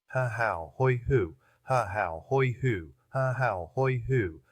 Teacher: I notice the resonance comes from the chest as well as the walls of the throat. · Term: chest resonance